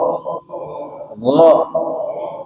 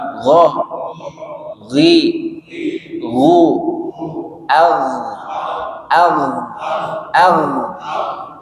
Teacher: Di mana tempat keluarnya? Tenggorokan bagian atas. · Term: satu makhraj